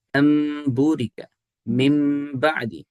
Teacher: با آ رہا ہے. تو جب بھی نون ساکن کے بعد با آ جائے تو آپ نے اس نون کو با اس نون کو میم کے ساتھ بدل دینا ہے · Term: اقلاب